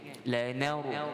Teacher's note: bacaan ro yang ditebalkan kerana sebelum huruf ro Nun itu berbaris fathah · Nak lafazkan kalimah yang pertama lanar, nun dengan fathah kita baca ringan, lanar. Jadi bacaan ra yang ditebalkan, kerana sebelum huruf ra nun itu berbaris fathah. Baik, jadi nun tetap ringanlah.